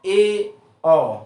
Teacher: कैसा हो, अर्ध संव्रत में क्या होता है कि मुंह हाफ क्लोज हो, मतलब जैसे ई बोला तो उसमें बंद सा है, थोड़ा सा उससे बड़ा हो, हल्का सा बड़ा हो, तो उसे क्या बोलते हैं, हाफ क्लोज। मुख द्वार आधा बंद रहता है,